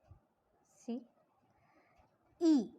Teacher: front, close, unrounded cardinal vowel e എന്ന് പറയുമ്പോൾ see e, when you say, it means that the front of the tongue is raised.